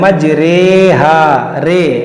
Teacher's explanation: ये जो आपके सामने है ये रे, इस पे देखिए खड़ी ज़ेर है, इसको कहते हैं इमाला वाली रे। इसको हमें री नहीं पढ़ना है, बल्कि हमें इसको रे पढ़ना है